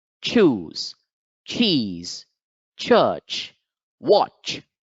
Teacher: So the first one is ch, ch. Again, I kept my tongue to the top of the teeth, and then after some time, I released it. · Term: ch sound